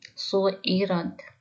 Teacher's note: را کو موٹا پڑھیں گے۔ سین اور عین کو لمبا نہیں کریں گے